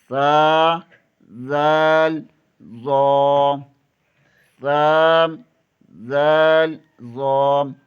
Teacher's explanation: زبان کی نوک ثنائے علیہ کے سرے سے لگے تو ثا، ذال، ظا ادا ہوتے ہیں